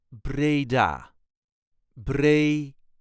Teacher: there is a light emphasis on the last syllable